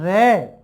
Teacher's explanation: जीभ की नोक मूर्धा की ओर जाती है, अंदर से आती हुई वायु उस नोक को टच करके निकलती है, इसीलिए हम इसको कहते हैं प्रकंपित या लुंठित।